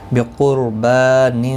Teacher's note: بقربان قاف مستعلیہ ہے، پر پڑھا جائے گا. را ساکن سے پہلے پیش ہے اس لیے پر پڑھا جائے گا